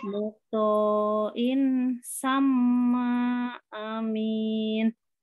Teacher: Nah, amin tasdid didengungkan dulu, ditahan.